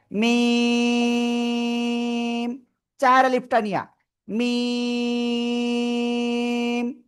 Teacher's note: দুই ঠোঁট, দুই ঠোঁটের বাইরের অংশ, শুকনো জায়গা থেকে উচ্চারিত হবে